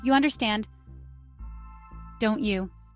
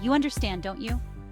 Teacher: Notice how my voice goes up because I'm checking if you understand.